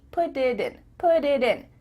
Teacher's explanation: Because instead of spending the time to let the air come out of your mouth, your tongue is just tapping the top of your mouth to make a D.